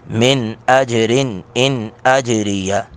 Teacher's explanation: من رن اور ان یہ تینوں جگہ پہ اظہار ہوگا